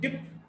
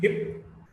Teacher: P is a voiceless bilabial plosive